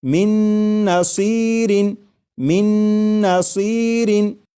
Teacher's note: میم کے بعد نون مشدد جو ہے اس کی آواز آئے گی اور غنہ کے ساتھ پڑھیں گے